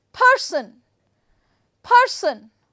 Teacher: I have put the stress on first syllable